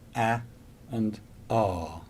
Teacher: the tongue is low or open the jaw is open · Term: low sounds